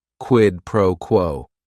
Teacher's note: is this one right here quidd proquo it is three words each word is only one syllable and if you're saying it together the stress is kind of on that first word and that last word